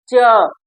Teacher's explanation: तो ये जो है हमारी जिह्वा का जो मध्य भाग है, मतलब जो हमारे जीवा, ऐसे आप लोग देखिए, ये जीवा हो गई और ये जो जीवा का मध्य भाग है, ये जीवा का जो मध्य भाग है ये हमारे तालु को स्पर्श करता है। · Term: तालव्य